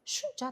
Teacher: Masalan, olaylik u, bu, shu, o'sha olmoshlariga ga jo'nalish, da o'rinpayt, dan chiqish, day o'xshatish qo'shimchasi cha qo'shimchalari qo'shilganda, demak, asos bilan qo'shimcha qo'shilgandan keyin asosdan keyin bitta n tovushi orttiriladi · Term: tovush orttirilishi